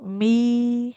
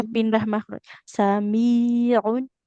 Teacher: Jadi masuk hidungnya cuma di awal. Mi ketika panjang dua harokatnya dia nggak boleh dihidung lagi. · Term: mim